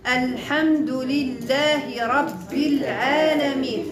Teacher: الحمد لله رب العالمين حذفت في درج الكلام عند الوصل اذا تحذف همزه الوصل في درج الكلام اي وصلا ولكن عند الابتداء ثابته لان العرب لا تبتدئ بساكن ولا تنتهي